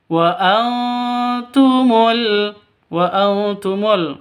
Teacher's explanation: nun mati bertemu dengan ta. Cara bacanya samar didengungkan, siap-siap ke huruf taknya. Karena bacaan ikhfa hakiki seperti itu.